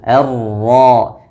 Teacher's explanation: Pada kata ar-rahman, di sini ada huruf ra bertasdid dan fathah, maka dibaca dengan tebal. Ar-ra. Dan hati-hati getarannya jangan terlalu banyak r atau hilang sama sekali.